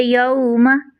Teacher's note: मीम पर ज़बर है, बगैर खींचे बगैर झटका दिया मारूफ तरीके यौमा, ये लाहने जली होती है अगर आप हरकत को खींच दें तो, ठीक है।